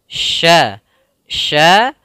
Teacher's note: Sya kita lafalkan dari tengah lidah kita dengan langit-langit atas